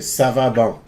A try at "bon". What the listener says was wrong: Okay, no N on the end. Be careful about that.